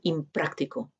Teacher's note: La P es bilabial y por lo tanto la sonora también se hace, la nasal también se pronuncia de manera bilabial